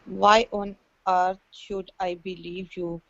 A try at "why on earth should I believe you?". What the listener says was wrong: Now in this sentence, your pronunciation of each word was really good, but one of the things you have to do when you have these question marks is you have to make your sentence go up. Why on earth should I believe you?